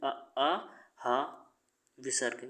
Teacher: उच्चारण के आधार पर स्वर को भी बांट दिया गया है कंठ में, जैसे आ, हा, विसर्ग, ये बोला जाता है कंठ से